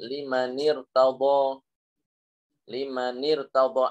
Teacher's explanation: Lah ketika kasroh yang seperti ini itu tetap ro-nya tetap dibaca tebel walaupun dia di kasroh